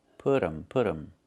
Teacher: It's put them. We make a reduction. We say put 'em. The T changes to a fast D.